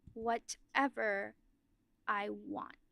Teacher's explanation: Your emphasis is now on the word whatever in a way that the first time around we were listening more to your I want because they were standing out.